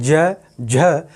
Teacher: तो गर्जना ज़्यादा हो रही है, तो सघोष की श्रेणी में आएगा